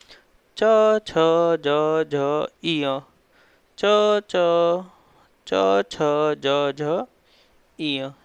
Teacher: अपनी जो जीभ है वो तालु से टच हो रही है।